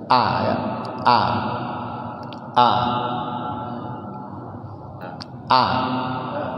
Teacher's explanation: dia punya sifat jahar, tidak ada napas yang mengalir ketika mengucapkan hamzah itu ya